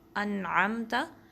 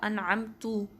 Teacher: ٹھیک ہے، یہ ابھی ہم سورہ فاتحہ میں پڑھتے ہیں انعمتا، اس کی جگہ انعمتو پڑھ دینا، یعنی کہ تا پہ زبر یا فتحہ تھی، اس کو ہم نے تا پر جو ہے پیش یا ضمہ سے بدل دیا، تو انعمتا کی جگہ ہم نے انعمتو پڑھ دیا، تو یہ بھی مسٹیک ہے۔